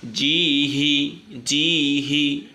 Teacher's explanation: হাটা এটা একদম গলা খুলে, বাংলা হ যেভাবে বলি, হাস হ্যালো এইচ যেভাবে বলি সেভাবেই এই গোল হাটা এভাবে উচ্চারিত হবে